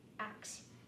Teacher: To review really quick, one example of pronunciation in African American English is metathesis, so switching the S and K in ask, ax.